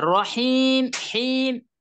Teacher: রহিম, হিম, এখানে তিন আলিফ টানতেছি আমরা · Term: মাদ্দে আরজি